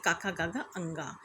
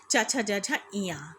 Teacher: ये 5 वर्ग जो हैं 5 इसमें अंतिम वर्ण जो हमारा है बच्चों, वो अनुनासिक है।